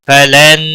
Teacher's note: نون مشدد پر گنہ ہوگا. نون ساکن یا تنوین کے بعد جب بھی حروف یرملون میں سے کوئی حرف آتا ہے تو ادغام با گنہ ہوتا ہے.